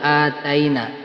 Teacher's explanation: Ini mad badal dibacanya panjang satu alif.